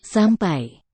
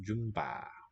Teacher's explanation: I hear a voiceless P in the first one, voiced B in the second